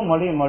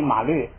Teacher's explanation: 这个马本来应该发啊，因为后边这个鱼是闭元音，所以这个马呢发成就马就变成摸